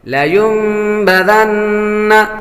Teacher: نون مشدد پر ہمیشہ غنہ ہوتا ہے